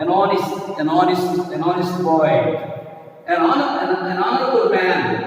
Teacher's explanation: even though it begins with H, generally here the vowel sound is pronounced. Vowel sound is here. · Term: silent H